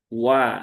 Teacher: Diucapkan dengan cara memonyongkan bibir terlebih dahulu kemudian setelah itu dibuka wa ya. Jadi bukan wa tetapi wa inna hamzah jangan sampai ee terayun ya sehingga terbaca menjadi hamzah yang ringan. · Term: huruf wau